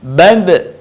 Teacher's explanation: dalam posisi mati, suaranya terdengar mantul